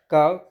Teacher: जैसे का को आप जब बोलेंगे तो एक कंठ से इसका सोर्स निकलेगा, तो एक कंठ है का वर्ग।